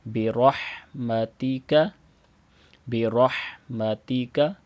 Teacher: اس ہا کی ادائیگی بھی صحیح کریں گے، حلق کے درمیان والے حصے سے